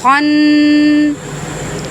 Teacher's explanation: یہاں نون مشدد ہے، اس کے اوپر غنہ ہوگا